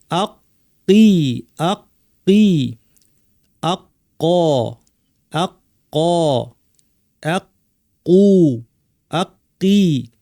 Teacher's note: কফ আছে 2টা, আমাদের একটু কষ্ট হয় কফটা অনেকের। জিব্বার সবচেয়ে পেছনের জায়গাটাকে উপরে তালুর মাংসল অংশে লাগিয়ে বলতে হবে কফ।